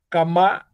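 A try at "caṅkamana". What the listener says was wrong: No, this is not ka. I told you the cha, this is cha. Chankamana. Chankamana. So ang sound is there. Here you can see ang sound. And then there is k sound.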